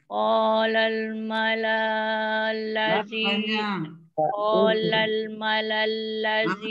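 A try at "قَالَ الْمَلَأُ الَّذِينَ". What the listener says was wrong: Macam tadi dah sebut tadi tu kan? Malaul. Ma pendek la pendek.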